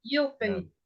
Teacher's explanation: The first syllable is stressed because we say euphemism. You. The U is the stressed syllable.